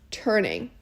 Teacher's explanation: we can see the iambic pentameter pattern with even the first word turning with the stress on turn